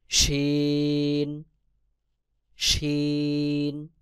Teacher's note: তারপর রয়েছে শিন। জিহ্বার মধ্যখান তার বরাবর উপরে তালুর সঙ্গে লাগাইয়া শিন উচ্চারণ হবে